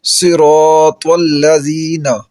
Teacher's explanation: اور اسی طرح را کے اوپر اگر زبر اور پیش آ جائے تو را کو موٹا پڑھا جاتا ہے، را کے نیچے اگر زیر آ جائے تو را کو باریک پڑھا جاتا ہے، جیسے صراط والذین، را کے اوپر زبر ہے تو را کو موٹا پڑھا جائے گا، جیسے صراط والذین، تو را کے اوپر زبر ہے، را کو موٹا پڑھا ہم نے۔